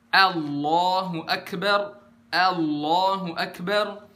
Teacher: Hamzah yang bener itu nggak dibaca tebal sama sekali tapi dia tipis ringan